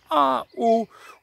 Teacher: c'est un petit décrochement de la gorge comme en français lorsqu on exprime sa surprise